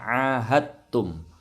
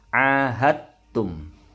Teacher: Hati-hati, ini bacanya ahadtum. Dalnya melebur ke huruf ta, jadi tidak mantul. Ini namanya bacaan idgham mutajanisain.